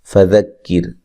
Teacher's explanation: را باریک ہوگی، را سے پہلے زیر ہے، را ساکن سے پہلے زیر ہے